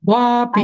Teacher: वा दीर्घ म्हणायचा म्हणजे मग पी आपोआप ह्रस्व येतो